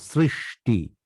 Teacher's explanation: শুধু সৃষ্টিতে শুরুটা এস, কিন্তু পরেরটা এসএইচ। শ্রী সেটা হচ্ছে এস, কিন্তু সৃষ্টি পরেরটা এসএইচ।